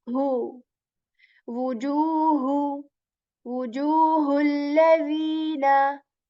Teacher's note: the ha that comes from the portion of the throat that is near to the chest